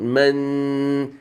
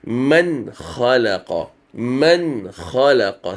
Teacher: It is a clear noon sakin. You don't read it with the ghunna. You don't read it with any merger.